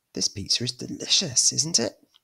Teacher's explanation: raising the intonation to try and get a response